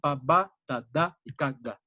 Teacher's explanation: Que son bilabiales, dentoalveolares y velares · Entonces vamos a tener el contraste sordo-sonoro para todo el juego de oclusivas y vamos a encontrar 3 puntos de articulación